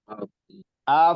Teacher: Ingat af itu F, hurufnya F kalau di huruf. Jadi dia ada rokhawah nama sifatnya, itu harus mengalir.